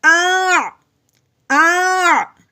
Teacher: پہلے حمزہ کی آواز آئے گی، اس کے بعد عین کی